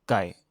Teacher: Lui, il est un michemin entre un G dur et un K. Attention à ne pas souffler d'air quand tu le prononces, sinon c'est une autre lettre.